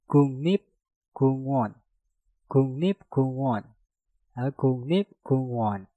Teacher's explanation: Kuk diakhiri dengan giok, setelah itu diikuti kata yang diawali dengan real. Maka gioknya kita rubah menjadi nyieng dan realnya kita rubah menjadi nien. Maka yang tadinya guk rip kungwon menjadi kungnip kungwon.